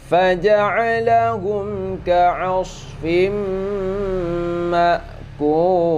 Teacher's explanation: Faja'alahum ini juga mim mati bertemu dengan kaf tidak berdengung ya, idhar syafawi tidak berdengung